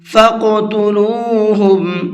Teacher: اور اس قاف کے اندر قلقلہ کریں گے، اس لیے کہ قاف حروف قلقلہ میں سے ہے، اور یہ قاعدہ ابھی میں نے آپ کو اوپر بتایا ہے، اور یہ ساتھ میں ساکن بھی ہے۔